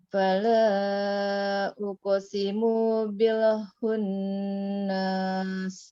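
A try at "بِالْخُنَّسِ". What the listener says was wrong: Hunnas. Pendek aja. Bil hunnas.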